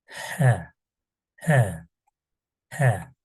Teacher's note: ince bir harf böyle boğazdan gelen bir harf